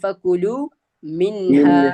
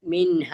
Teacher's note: ആ നൂനിനെ ഇൻ എന്ന് നമ്മൾ വ്യക്തമാക്കി ഉച്ചരിക്കണം. പക്ഷെ ഇവിടെ നമ്മൾ വ്യക്തമാക്കുന്ന സമയത്ത് മണിക്കാൻ പാടില്ല. മിൻഹ മണിക്കാൻ പാടില്ല. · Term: ഇദ്ഹാറാണ്